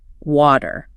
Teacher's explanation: it is a very soft sound in the middle. It almost turns into a D